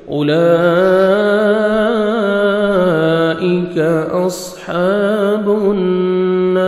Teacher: صاد کو موٹا کر کے پڑھنا ہے